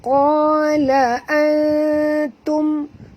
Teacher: nun mati bertemu ta, kita kena sorokkan bunyi nun ke dalam ta, 2 harakat, kena dengung ya. Diikuti dengan dengung 2 harakat.